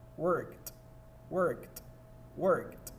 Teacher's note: La primera palabra que tenemos en la primera columna con sonido T es worked. nótese que debemos pasar por cada consonante, R, K, y finalmente terminamos con sonido T, justo donde está el sufijo ed.